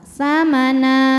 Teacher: Jika berhenti, na hukumnya adalah mad iwad sebab ada fathah tanwin yang diwakafkan. Cara bacanya, fathah tanwin diganti jadi fathah dan dipanjangkan 2 harokat.